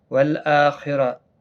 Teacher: حمزہ کے اوپر کھڑی زبر ہے، ایک الف کی مقدار کے برابر کھینچیں گے۔ خا مستعلیہ میں سے ہے، پر پڑا جائے گا، را پر پڑا جائے گا زبر کی وجہ سے، اور گولتا ہا ساکن بن جائے گا وقف کی صورت میں، کیونکہ یہاں پر وقف مطلق ہے۔